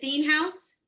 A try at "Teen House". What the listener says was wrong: Teen House, it's a hard TH.